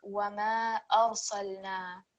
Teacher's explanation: So basically, even though it is a ra sakin over here, because it's preceded by a fatha, this is going to be thick